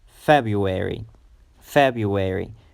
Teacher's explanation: the stress is on the first syllable so you have to pronounce it longer